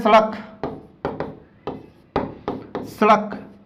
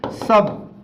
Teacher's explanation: जब इसका उच्चारण करेंगे तो हमारी जीभ दांतों से स्पर्श होती है, इसलिए इसे क्या कहा जाता है, इसलिए इसे दंत स के नाम से भी हम जानते हैं।